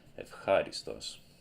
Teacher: because a h sound is voiceless, the ypsilon here has to be pronounced as a f instead of a v